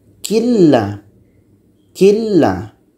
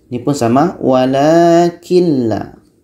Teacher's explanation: Ni nun mati la, nun mati masuk idgham ke la. Jadi tidak dengung ya. Idgham bila gunnah, tak dengung.